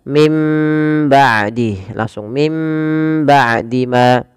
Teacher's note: Yang pertama dengan idbaq, yaitu dengan merapatkan bibir kita, dan yang kedua masih ada furjah sedikit, tapi kita mengambil yang idbaq saja.